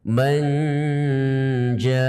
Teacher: yaitu dibaca dengan memasukkan suara ke dalam hidung · Yang kedua, memasukkan nun pada makhrajnya jim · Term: gunah